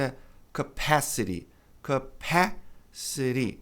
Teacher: No inglês americano, há uma tendência do T ser pronunciado como re.